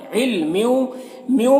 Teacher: ادغام ناقص ہو رہا، تنوین کو واو سے ملا کر غنہ کے ساتھ پڑھیں گے۔